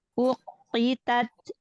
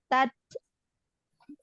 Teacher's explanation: syiddahkan dulu, tahan makhrajnya di huruf ta, baru nafasnya dilepaskan, dialirkan hamasnya. Uqitat. Nah, jadi tahan sebentar, tat, gitu, ya.